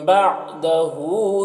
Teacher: بعدہ ہا مولٹا پیش ہے، یہ واو مدہ کی طرح ہوتا ہے تو اسے 1 الف کے برابر کھینچیں گے